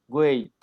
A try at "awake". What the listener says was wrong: wait. I'm saying awake. Con K, no con T. Wake.